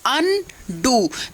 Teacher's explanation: अन भी हमने उतनी ही जोर से बोला और डू भी